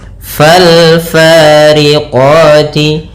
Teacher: Di sini ada alif lam lagi, yaitu alif lam qamariah, yaitu alif dan lamnya ditulis dan dibaca dengan jelas suara lamnya